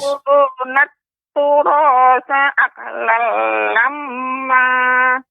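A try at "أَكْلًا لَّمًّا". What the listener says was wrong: Nah, di sini tidak boleh aqlal, akan tapi aklal. Ya, aklal lamma.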